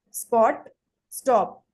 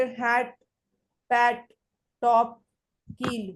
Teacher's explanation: such sounds are not aspirated at the end of the words or in the combination with certain consonants